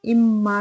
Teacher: میم مشدد ہے تو یہاں پہ ہم غنہ کے صفت کے ساتھ ادائیگی کریں گے